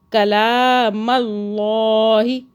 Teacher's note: یسمعون کلام اللہ، کلام اللہ، اللہ موٹا ہو رہا ہے، اللہ سے پہلے زبر آ رہا ہے